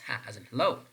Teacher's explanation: This is voiceless glottal fricative. It means that when you're producing ha, less vibration is perceived, and this is glottal because the gluteus is involved in the production of the sound ha.